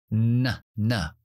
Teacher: es también nasal y tapamos en la zona de la t o la d en la zona alveolar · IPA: /n/